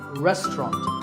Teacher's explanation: in British English you might hear just two syllables